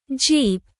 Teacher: your lips close and pop open